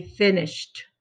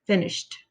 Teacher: I can just add ed. And now whenever we have the sh, it's unvoiced. That means there's no vibration in your throat. It makes the ed makes the t sound.